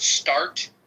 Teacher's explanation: at the beginning of the word start there's no delineation between the S sound and the T sound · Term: silent schah